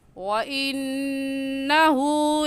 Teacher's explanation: وَإِنَّهُ کی نون پر ہم نے کیوں غنہ کیا؟ کیونکہ یہ نون مشدد ہے، اور نون مشدد پر ہمیشہ غنہ ہوتا ہے